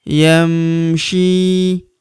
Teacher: Huruf syi kita panjangkan dua harakat karena terdapat ya sukun di depannya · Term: panjangkan 2 harokat